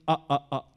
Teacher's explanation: da bir glottal stop dersek a a a dedik Ne oldu Şu gırtlak bölge glottis bölgesinde Biz havayı parçalara ayırıyoruz